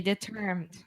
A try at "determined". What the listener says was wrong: Determined, amor. Determined. Okay, you're saying determinant. Determined. Determined.